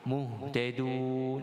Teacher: Pada halqi, kita baca dengan bacaan yang disebut bacaan paling bawah lah, makhraj yang paling rendah, cuma jangan ditekan, nanti jadi ha, muhtadun.